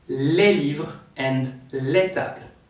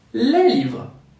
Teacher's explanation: The final S is silent in French, so we need the article les to understand we're talking about several things.